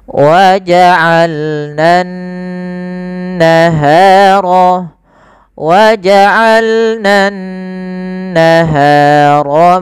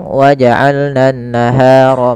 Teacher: cara melafalkannya adalah menahan dulu suara n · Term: bacaan ghunah